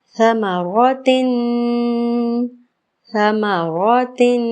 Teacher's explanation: समा समा समा की आवाज़ नहीं आनी चाहिए, सीटी ज़रा सी भी महसूस ना हो। समारोतिन ये गलत हो जाएगा, ये सा की जगह सीन लग जाएगा।